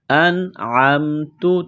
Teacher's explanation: نون ساکن کے بعد عین ہے، حروف حلقی ہے تو نون ساکن پر غنہ نہیں کریں گے